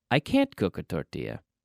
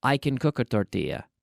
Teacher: we add a special intonation on can't but we don't put a special stress on the affirmative can usually